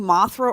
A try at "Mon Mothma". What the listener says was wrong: you were saying Mothra. Mothma.